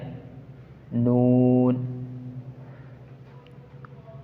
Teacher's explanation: सिरा ज़ुबान तालु से मिलकर नून अदा होता है